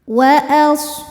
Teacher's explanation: Sodnya berdesis ya, punya sifat yang tidak memiliki lawan, namanya sofir, berdesis seperti suara angsa.